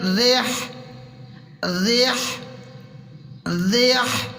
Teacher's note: اگر را کے اوپر زبر اور پیش آئے گی تو را کو موٹا پڑھیں گے، را کے نیچے زیر آئے گی تو را کو باریک پڑھیں گے، موٹا نہیں کریں گے۔ ہا کو بالکل باریک حلق سے نکالیں گے